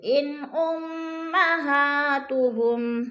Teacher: نون ساکن کے بعد حروف ہلکی میں سے حمزہ آ گیا تو ادھر اظہار ہے، اخفا نہیں کریں گے، لفظ کو ظاہر کر کے پڑھیں گے